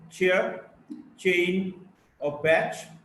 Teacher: Now we go to Ch, voiceless post-alveolar affricate